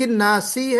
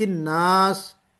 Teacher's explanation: سین کے اوپر حرکت تھی، زیر، ہم نے اس کو سکون میں بدل دیا، ٹمپریری سکون لگ گیا۔ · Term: سکون عارضی